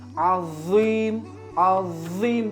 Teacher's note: Aslida esa zo harfini talaffuziga ahamiyat beradigan bo'lsak, tilimizni uchi yuqori tishlarimiz orasidan birozgina chiqishi, ya'ni ozgina chiqishi va til orqasini ko'tarib azim, azim deb yo'g'on talaffuz qilishimiz kerak bo'ladi